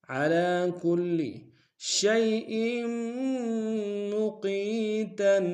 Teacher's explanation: شیء میں شین کو یا کے سامنے آئیں گے، یا لین بغیر کھینچے پڑیں گے ، حمزہ کے نیچے تنوین ہے، تنوین کو میم کے سامنے